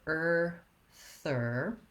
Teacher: sound begin with your er and then add your th so start on the er and then bring your tongue forward for a really short light th